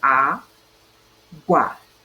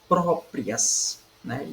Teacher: Própria, nós temos aqui a penúltima sílaba é a mais forte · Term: sílaba tônica